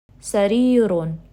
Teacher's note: letter Ya, which is coming right after the Kasra and it's stretching it for 2 counts